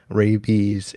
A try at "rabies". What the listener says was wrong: Did you say rabies or rapies? It kind of sounded like you said rapey.